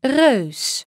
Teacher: It's a rounded version of the familiar sounding a diphthong. So your tongue is going to do the exact same thing as an a. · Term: very mixed vowel